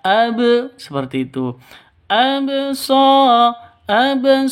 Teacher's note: hukum Qalqalah berlaku harus dipantulkan ke ba sukunnya